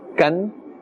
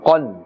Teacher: If we say dihakan, then it's incorrect because we are confusing the qaf, which is supposed to be made with a full mouth, with the kaf. And the kaf has a more gentle and thin sound